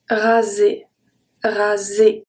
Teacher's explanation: The word is pronounced raser, raser. The S is pronounced as a Z because it's between two vowels.